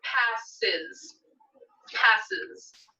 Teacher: pass ends with one of our buzzing sounds so we need to add the syllable is on to the end of it